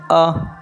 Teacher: अ तो मध्य स्वर है इसके उच्चारण में क्या होता है आधा मुख खुलता है